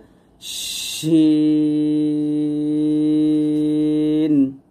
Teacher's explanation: জিহ্বার মধ্যখান তার বরাবর উপরে সঙ্গে লাগবে